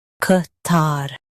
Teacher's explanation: In US, stress tar and say ka. In UK, use cut.